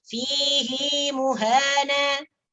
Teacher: untuk fihi dalam ayat 69 surah Al-Furqan ini, fihi ini hinya dipanjangkan dengan panjangnya mad silah, 2 harakat.